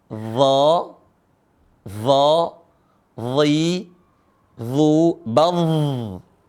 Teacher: Cara bacanya adalah ujung lisan ketemu dengan ujung gigi seri atas. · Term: huruf dha